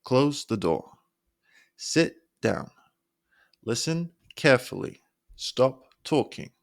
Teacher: Now we also use a lower pitch for commands and instructions. So say these firmly, lowering your pitch to sound more authoritative.